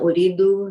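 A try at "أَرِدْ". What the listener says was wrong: No, the fatha.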